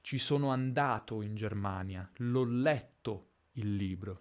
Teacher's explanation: un elemento che è lasciato alla fine della frase quasi isolato anche nell'intonazione